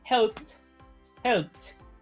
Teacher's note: Cuando el sonido que viene antes del ed es voiced, o sea, las cuerdas vocales vibran, se pronuncia el ed como una D, played. Si el sonido que viene antes del ed es un sonido voiceless, que no hace que las cuerdas vocales vibren, se pronuncia como una T, helped, helped.